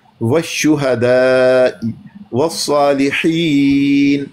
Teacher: वक्फ कर रहे हैं, नून को साकिन कर देंगे।